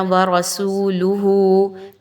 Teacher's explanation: لام پر پیش آ گئی تو ہم اس کی ادائیگی بہت چھوٹی سی رکھیں گے، لمبا نہیں کرنا